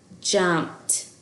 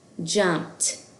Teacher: So do you hear that? The ed at the end of jumped sounds like t.